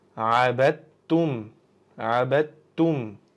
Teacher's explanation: Bu yerda dal harfimizni talaffuz qilmaymiz, chunki undan keyingi ta harfimizda tashdid bo'lganligi uchun dal harfimizni o'qimasdan ta harfimizga o'tib ketamiz.